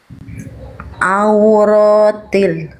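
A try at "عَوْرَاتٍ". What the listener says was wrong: Oke, itu masih ada sengau-sengaunya sedikit. Gak apa-apa, yang penting Bunda mulai ainnya jangan sampai dibaca hamzah. Harus ain walaupun ainnya masih ada suara hidung. Au, jangan au. Auratin.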